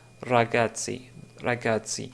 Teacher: c'est le R roulé de l'italien